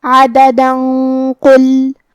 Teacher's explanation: اگر ہم یہ آیت کو اگلی آیت کے ساتھ ملا کے پڑھے تو حرف القاف کلمت قل حروف الاخفاء میں سے ہے اور اخفاء کا معنی ہے چھپا دینا، تو ہم یہ تنوین کو چھپاتے ہوئے لیکن غنہ کے ساتھ یہ حکم کو ادا کریں گے